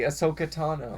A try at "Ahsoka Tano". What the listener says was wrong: No, it was just your inflection was weird.